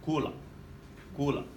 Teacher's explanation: Now the stress or the emphasis is on that second vowel, kula.